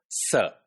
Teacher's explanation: Just imagine, like when you are to produce the sound s, right? So you create basically a turbulence at the alveolar ridge with the help of your tongue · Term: alveolar fricative